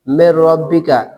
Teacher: را، را سے پہلے، اور را ہے حروف یرملون میں سے، را ہے حروف یرملون میں سے، تو پھر نون ساکن کو را کی جنس سے کر کے ادغام کرتے ہیں، را کی جنس سے کر کے ادغام کرتے ہیں، تو نون کو، نون ساکن کو را سے تبدیل کر دیا